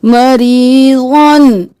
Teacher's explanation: रा बारीक ज़ाद मोटा